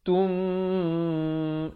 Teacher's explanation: mim mati bertemu mim, dengung 2 harakat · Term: idgham mislain